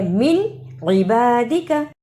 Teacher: من عبادك اظہار یعنی نون ساکن کی آواز کو ظاہر کرنا ہے